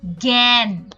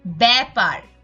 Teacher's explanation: ফলা যুক্ত ব্যঞ্জনের সঙ্গে যুক্ত আটার উচ্চারণ এ এর মত হয় অর্থাৎ স্বাভাবিক উচ্চারণ হয় না একটুখানি বিবৃত উচ্চারণ হয়